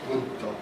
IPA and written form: gɯddo (グッド)